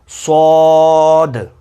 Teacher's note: صاد میں موٹائی بھی ہے، آخر میں دال کی آواز ہے اور دال پر قلقلہ ہے